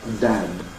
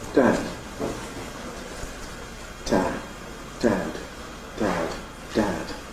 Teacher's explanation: you don't get vibration of the vocal folds throughout the whole phase of the /d/ at either end · There is a degree of devoicing of the initial and final plosives when they’re adjacent to silence or pause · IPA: [d̥æd̥]